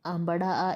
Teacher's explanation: जीभ जब नीचे की ओर रहती है तो मुख विवर पूरा खुला हुआ रहता है। इसे ही विवृत कहते हैं या खुला हुआ कहते हैं।